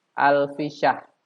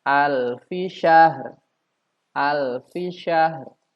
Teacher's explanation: Kesalahannya ada di tidak dibacanya huruf ro di ujung ayat.